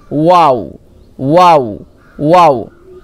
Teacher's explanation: দুই ঠোঁট না মিলিয়ে মাঝখান হতে উচ্চারিত হয়